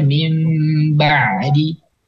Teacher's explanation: nun sakinah yang atau tanwin tadi ketika bertemu dengan ba maka ditukar atau diubah menjadi mim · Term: iklab